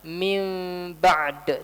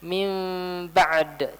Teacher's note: Saya nggak baca dengan jelas, tapi diikhfakan, disamarkan mimnya.